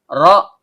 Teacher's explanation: Ro, ujung lidah bertemu dengan langit-langit bagian belakang. Karena ro-nya berharokat fathah, maka hukum bacaannya tebal atau tabkhim.